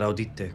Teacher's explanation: Here the actor says audite, sounds like a double T. And this is a sort of compensatory lengthening, in this case of the consonant rather than the vowel. So it's audite.